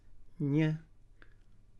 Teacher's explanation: spoken with the tongue raised, ny. For students, this tongue raising is called palatalization.